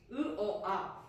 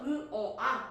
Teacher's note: 혀가 점점 내려가니까 입이 커지는 거야. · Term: 후설 모음